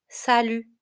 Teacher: in salut, you have a final T, which is silent.